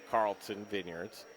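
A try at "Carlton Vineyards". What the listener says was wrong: Carlson Vineyards. Carlton, you throw a T in there, baby.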